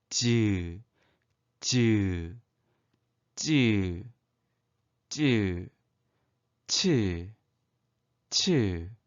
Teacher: 아주 짧은 순간 닿고 그 다음 부분이 떨어지면서 공기가 좁아진 사이로 마찰도 일으키며 내는 소리입니다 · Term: 파찰음